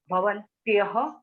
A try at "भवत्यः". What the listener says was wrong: Not bhavantyaha. Bhavatyaha. Nakara don't add. bhavatyau, bhavatyaha.